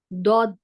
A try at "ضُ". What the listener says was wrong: Nah, jangan dot. Nah, itu udah ujung tuh Mi, tekanannya. Semuanya sisi. Tekanannya di sisi semua. Yang penting sisi semuanya tekanannya di sisi ya.